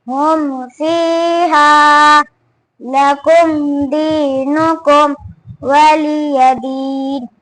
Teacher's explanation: وہاں پر میم ساکن کا اظہار ہوگا، یعنی جلد پڑھا جائے گا، نہ کھینچے گا نہ گننا ہوگا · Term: اظہار شفوی